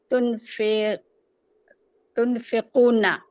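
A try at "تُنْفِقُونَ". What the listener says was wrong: तुनफी, फे नहीं कहना, ठीक है?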